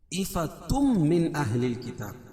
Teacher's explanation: تنوین کے بعد ادغام مع غنہ کے 4 حرفوں میں سے میم ہے، تو یہاں غنہ کر کے پڑھیں گے۔